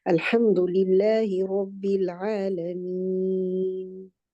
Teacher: when you stop at al-alameen, this ya now can be stretched to 2, 4, or 6 counts. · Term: mad letter